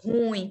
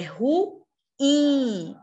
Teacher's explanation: A sílaba tônica é in. É uma oxítona.